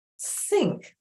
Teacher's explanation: Look at the letter N in think, and it doesn't have an n sound. It actually has an ng sound.